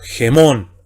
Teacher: Anteponemos sonido gutural fonético J a la misma vocal eta y sería G y entonamos el acento circunflejo. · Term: espíritu rudo